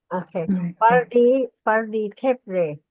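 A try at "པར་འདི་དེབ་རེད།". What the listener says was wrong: That's it.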